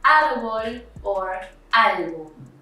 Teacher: These words are stressed in the second to last syllable. If they end in anything but N, S, or a vowel, they have a spelled accent mark. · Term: graves